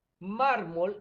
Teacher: si dividimos mármol en sílaba verificamos que la sílaba mar es la sílaba fuerte la sílaba tónica